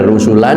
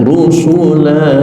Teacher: tanwinnya tidak terdengar rusulan tetapi diganti dengan panjang rusula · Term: mad iwad